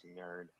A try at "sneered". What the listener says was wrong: You said, no, you did not. You said snurred. Snurred.